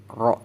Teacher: ketika roh berharakat fathah maka dibaca tebal rok jangan rak dan ketika roh berharakat dhammah maka dibaca ruk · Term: tafkhim